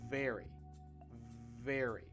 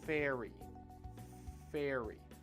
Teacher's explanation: the V sound in English is the voiced version of the F sound